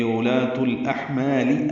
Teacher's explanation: تا کو الاحمال کی لام سے ملانا ہے، اظہار قمری ہوگا. حا ساکن پہ ہمس ہے